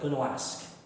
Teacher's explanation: It's almost like you're adding the W to this word, gonna ask.